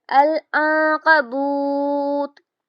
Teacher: العنکبوت، واو مدہ ہے تو اس کو ہم 2 حرکت کریں گے اور آگے بھی جزم کے ساتھ پڑھیں گے تو یہاں پر مدارس للسکون کی طرح پڑھا جائے گا۔ اور یہاں پر نون ساکن کے بعد حروف اخفا ہے تو نون کی آواز کو ناک میں چھپا کر پڑھیں گے